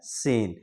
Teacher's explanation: उसी तरीके से सीन का भी मखरज है। यानी जबान की नोक सामने वाले नीचे के चार दांतों में जाकर टकराती है।